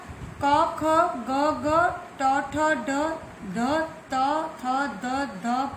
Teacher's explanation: जीभ या होठ दूसरे के मुख अवयव के साथ स्पर्श करके श्वास वायु को पूरी तरह रोक लेते हैं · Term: स्पर्श व्यंजन